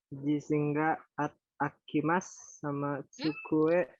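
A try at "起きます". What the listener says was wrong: A janayo. Ini bukan huruf A.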